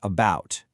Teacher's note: you've got the super reduced schwa, that fast, quiet sound in a word like about